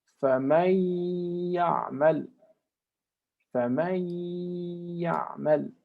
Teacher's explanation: So you skip the noon or the tanween and pronounce ghunna with these 2 letters, with these 4 letters, sorry, for 2 counts.